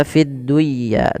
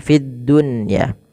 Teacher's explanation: ketika nun sukun bertemu dengan ya itu harus diidgamkan. Tapi karena di sini dalam satu kata maka tidak diidgamkan. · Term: Izhar mutlak